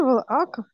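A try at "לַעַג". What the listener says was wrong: лаак. Ну вообще надо стараться айн все-таки как-то говорить, да, мы не можем, но вообще надо лаак.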